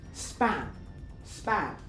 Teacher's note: In consonant clusters such as S P at the end of the consonant cluster P is unaspirated and is also pronounced more lenis.